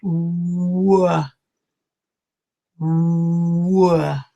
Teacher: And it's not a hood, because I'm not blowing air through my mouth. So I'm not saying hood. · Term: W sound